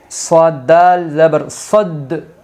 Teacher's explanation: ناظرین، ہم نے یہاں سختی سے پڑھا، کیوں پڑھا؟ کیونکہ دال ساکن ہے اور دال حروف قلقلہ کے 5 حرفوں میں آئے گی، اس لیے یہاں قلقلہ ہوگا